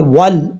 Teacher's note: کچھ لوگ سمجھتے ہیں کہ واو کو جب لام سے ملائیں گے تو الف بھی پڑھا جائے گا، ایسا نہیں ہے، اس کو لمبا نہیں کریں گے، الف گر جائے گا، واو کو لام سے ڈائریکٹ کنیکٹ کریں گے، وال، اس طریقے سے پڑھا جائے گا۔